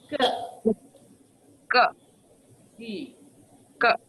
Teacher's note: क एच की आवाज ना आए।